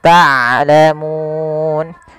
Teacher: Harusnya dia ain dari tengah tenggorokan kita, dan ain punya sifat bainiyah. Di antara syiddah dan rokhawah tidak dialirkan suaranya dan tidak terlalu ditahan suaranya, tapi di tengah-tengah di antara keduanya.